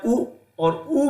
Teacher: आप देखिए, जब भी आप उ और उ बोल रहे हैं तो आपके होंठ जो हैं, आपके ओष्ठ जो हैं, वो बिल्कुल सिकुड़ कर और आगे को हो रहे हैं, अर्थात उनमें गुलाई आ रही है, वो गोल हो रहे हैं। उनका जो शेप है, उनकी जो स्थिति है, वो परिवर्तित हो रही है।